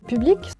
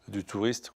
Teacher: There's far less air coming out on those p, t, k sounds, so make sure you don't add a h to these sounds.